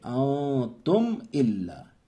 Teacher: میم میں غنہ نہیں کریں گے، صاف پڑھیں گے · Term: اظہار شفوی